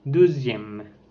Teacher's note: c'est une voyelle antérieure mi-fermée, arrondie et orale.